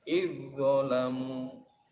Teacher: Ini juga dibaca idgham jinsi. Idzalamu, zal mati bertemu dha, zalnya dimasukkan huruf dha. Jadi bacanya idzalamu.